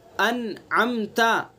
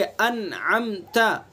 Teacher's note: इजहार करके बग़ैर गुन्ना के अपने मखरज से निकाल करके अदा करेंगे